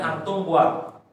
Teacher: Ketika membaca mim sukun, mim mati, mim idhar, itu jangan sampai ditahan